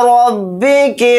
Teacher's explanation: रा को मोटा यानी पुर पढ़ेंगे क्योंकि रा के ऊपर ज़बर है